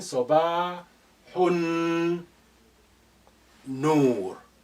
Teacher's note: Lam is silent here because noon is your sun letter. It's carrying shadda. So therefore, the sukun on lam of al has been removed.